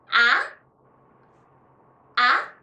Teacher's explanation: And second tone is rising tone. Start medium in tone and then rise to the top, just like when you're about to ask a question. Like in English when you say, huh?